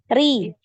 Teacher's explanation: Kasrah tipis ri, ya, jangan ikutan tebal.